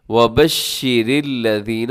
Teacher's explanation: را باریک ہوتی ہے کیونکہ را کے نیچے زیر ہے